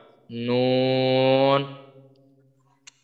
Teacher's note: মাখরাজ জিহ্বার আগা তার বরাবর উপরে তালুর সঙ্গে লাগাইয়া উচ্চারিত হয় নুন।